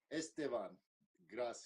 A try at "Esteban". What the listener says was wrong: Esteban, with the accent on E. Esteban.